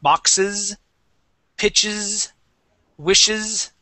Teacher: if you add an ES to the end, that will definitely be a voiced S